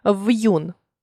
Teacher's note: приголосний перед апострофом не пом'якшується вимовляється твердо